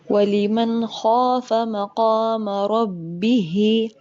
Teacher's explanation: ہا کے نیچے کھڑی زیر ہے، یا مدہ کی یہ قائم مقام ہے، 2 سیکنڈ لمبا کریں گے